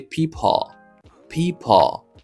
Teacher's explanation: Premier son c'est un son I, regardez, ça veut dire c'est un son long I. Deuxième son lui-même c'est un son schwa sound. Ça veut dire c'est schwa ça qui est accompagné avec L là qui vient by c'est OK, ouais, c'est people.